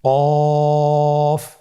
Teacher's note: কাফের মাখরাজ হলো জিহ্বার গোড়া থেকে একটু আগে বাড়িয়ে তার বরাবর উপরে তালের সঙ্গে লাগিয়ে উচ্চারিত হয়।